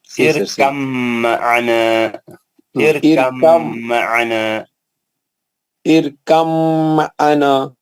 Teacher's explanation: با کا آواز جو ہے بالکل نہیں نکلنا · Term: ادغام متجانسین